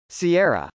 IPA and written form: siˈɛrə (sierra)